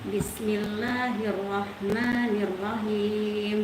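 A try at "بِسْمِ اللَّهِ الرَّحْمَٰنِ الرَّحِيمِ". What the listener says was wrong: Kurang dengar. Halqi dia di sini.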